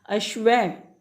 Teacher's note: विसर्ग बोलते हैं। विसर्ग का उच्चारण ह, इसमें ह तो प्रॉपर नहीं होता, लेकिन ह जैसी साउंड होती है।